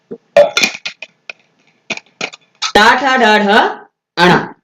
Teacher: मूर्धन्य यानी जिसमें हमारी जीवा मुड़ती है, उन वर्णों के उच्चारण करते समय जीभ मुड़ती है, वो है टवर्ग। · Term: मूर्धन्य व्यंजन